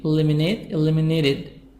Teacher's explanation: In American we can make the T soft D, so say eliminated.